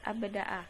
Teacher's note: huruf ba tidak mengalirkan nafas. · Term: jahar